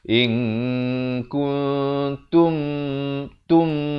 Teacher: Bila sampai di tum, saya naikkan bunyi dengungnya itu. Sebab apa? Saya nak membezakan antara ikhfa dan idgham.